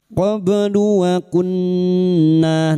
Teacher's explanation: Jangan lupa dipantulkan. Qlu waunna nun yang bertasdid gunna musyadadah kita dengungkan selama tiga harakat